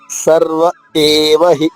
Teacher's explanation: ఏ అనేది గొంతు నుంచి రావాలమ్మ సర్వ ఏవహి ఆగాలి సర్వ తర్వాత ఆగి ఏవహి సరే గుడ్ సర్వ యేవహి